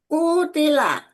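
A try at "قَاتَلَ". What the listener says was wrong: Patahkan Eyang, patahkan jangan kasroh. Jadi ta. Kota.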